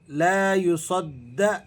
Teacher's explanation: دال پر تشدید ہے، ذرا آپ نے اسے سختی کے ساتھ جماؤ کے ساتھ ادا کرنا ہے۔ عین حروف حلقی ہے، ولا یوں، نون پر آپ نے اخفا ادا کرنا ہے اور زا کو آپ نے ذرا سختی کے ساتھ ادا کرنا ہے۔